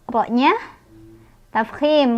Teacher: ro-nya tafkhim karena ro-nya barisnya fathah, dibacanya tebal.